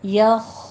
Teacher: खौ स्टॉप करना है, कलकला नहीं करना, इसके ऊपर यखो नहीं कहना, यख शा, यख शौ भी नहीं कहना, शौ नहीं है, शा शा, ठीक है, शीन खड़ी ज़बर शा बारीक रखना है।